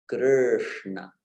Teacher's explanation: the tongue actually doesn't touch the palate, at least not in the center, so that you're getting that Krishna, It's not kri, there is no e sound there. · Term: R with the dot below